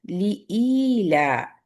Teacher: ہر رحمن الرحیم لإیلاف قریش۔ لی ایک کاؤنٹ ہے، ای آپ کو تھوڑا سا اسٹریچ کرنا ہے،